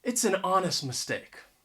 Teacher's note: That H is silent, an honest mistake.